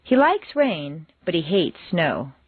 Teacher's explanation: Like and hate are contrasted and are the stronger words in the sentence.